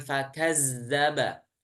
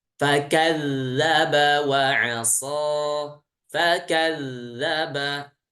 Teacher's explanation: Huruf dal makhrajnya itu dari ujung lidah bertemu dengan ujung seri atas ya. Torful lisan ma'a atrafis sanayal ulya. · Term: huruf zal